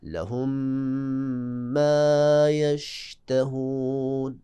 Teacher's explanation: لہم، لہم کے آخر میں میم ساکنہ اور اس کے بعد فوراً ما پہ زبر، میم متحرک، تو پہلی میم ساکنہ کو دوسری میم میں ہم ادغام کریں گے اور پڑھیں گے غنّے کے ساتھ۔ دیکھیں، لہم ما یشتہون، غنّہ ضرور کرنا ہے اپنے، لہم ما یشتہون۔